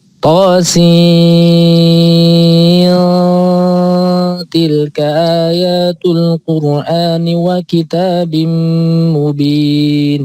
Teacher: Jadi sin ada nunnya, kemudian ketemu tak itu ikhfa